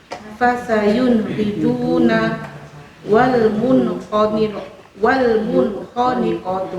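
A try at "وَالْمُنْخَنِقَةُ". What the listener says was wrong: Nah, ini kho ini yang harus banyak ngoroknya Ibu.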